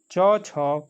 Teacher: च छ का उच्चारण स्थान कौन सा है दोस्तों? तो ये तालु से बोला जाता है